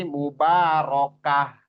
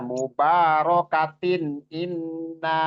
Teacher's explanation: Yang terakhirnya kalau kita wakof di situ. Kalau kita wakof dia berubah jadi ha. Namun kalau kita sambung dia berubah jadi ta. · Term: ta marbutoh